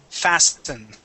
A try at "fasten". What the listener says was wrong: Okay, the T is silent. Okay, fasten. No T.